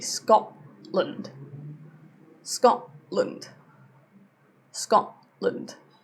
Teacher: if a T ends a syllable and the next sound after that is a consonant, it tends to be a glottal stop.